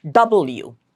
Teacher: And it's bilabial. As you can see, both our lips are coming together. Double, both the lips are coming together.